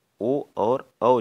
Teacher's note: जो हमारा ओ और औ कंठोस्थ होते हैं